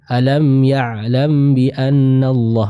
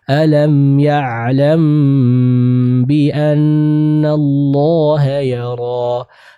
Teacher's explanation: Tahan terlebih dahulu karena di sana ada pertemuan antara mim sukun dan huruf ba. · Selanjutnya di ayat yang ke-14, hati-hati, huruf mim mati, huruf mim sukun bertemu dengan huruf ba dihukumi sebagai ikhfa syafawi. Tahan terlebih dahulu, jangan terburu-buru dilepas ya